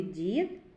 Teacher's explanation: у слові дід на початку слова м'який приголосний дь а укі кінці слова твердий приголосний д зробимо звуковий аналіз слова